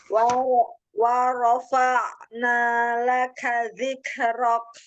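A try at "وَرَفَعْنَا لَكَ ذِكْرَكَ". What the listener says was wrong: Zikr. Wa rafa'na laka dzikrok. Jadi bukan dipantulkan, tetapi dihameskan. Jadi jangan zikrok, enggak. Zikrok gitu ya. Jadi hamas itu terjadi ketika kita sudah mensyiddahkan hurufnya.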